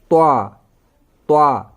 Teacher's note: अब त्वा पढ़ने में डिफरेंट क्यों लग रहा है? क्योंकि त्वा पुर है। त्वा को पढ़ने के लिए हमें अपना मुंह गोल जैसा करना होता है और इस बोर्ड को हमें मोटा करके पढ़ना है। · त्वा का मखारिज है जुबान की नोक सनाया उलिया की जड़। सेम जैसे ता, दाल, वैसे ही त्वा भी, जहां से ता और दाल अदा हो जाता है वहीं से त्वा भी अदा हो जाता है।